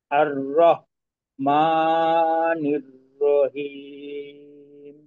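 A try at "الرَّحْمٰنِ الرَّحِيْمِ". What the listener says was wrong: হলকের মধ্যখান থেকে আইন হা এই দুইটা হরফে আপনার একটু সমস্যা হচ্ছে।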